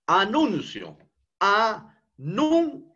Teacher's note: Nun es la sílaba donde se encuentra el acento prosódico.